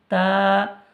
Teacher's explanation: জিভের আগা সামনের ওপরের দুই দাঁতের গোড়ার সাথে লাগিয়ে উচ্চারিত হয়